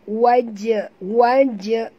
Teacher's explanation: huruf jim bila dia mati di tengah kalimah begini, kita kena lantunkan dia.